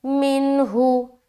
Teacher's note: اس طرح سے، فش، فش، فش، فش، فش، فش، ایسے، فش، اس طریقے سے، فَشَرِبُوا مِنْهُ، میم نون زیر من، ہا پیش، ہو، یہاں پر نون ساکن کے بعد ہا ہے، یہاں پر پھر ہم اظہار کا قاعدہ کریں گے، نون کی آواز کو صرف اور صرف ظاہر کرنا ہے اور آگے نکل جانا ہے